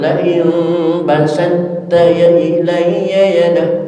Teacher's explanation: to dimasukkan ke huruf ta dengan hukum idgham mutajanisen. Karena to dan ta satu rumpun, kadang-kadang ta yang mati dimasukkan ke to yang mati dimasukkan ke ta.